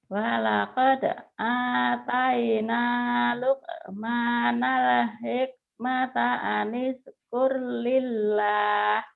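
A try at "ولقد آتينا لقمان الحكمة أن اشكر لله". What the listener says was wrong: Sudah bagus sinnya doang ya, sin gedenya tuh nggak keluar. Walaqad ataina Luqmanal hikmata anishkur lillah.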